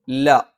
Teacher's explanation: നാവിൻ്റെ അറ്റം മേലെ മുൻപല്ലിന്റെ മോണയിലാണ്